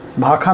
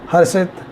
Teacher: श जो है ख में भी परिवर्तित होता दिखाई देता है, इसलिए भाषा भाखा में बदल जाती है, हर्षित हरखित में बदल जाता है।